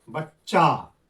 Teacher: इसको जब बोलते हैं तो एक व्यंजन जैसा नहीं लगता है। दो व्यंजन जैसा लगता है।